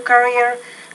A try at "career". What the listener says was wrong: Career. So you got to pronounce that R a little more clearly. Career.